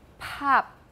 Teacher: the first one has aspiration that puff of air